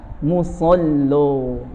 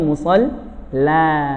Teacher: Kalau kita bacanya musalla. Kenapa jadi o? Karena ada lam mufakhamah.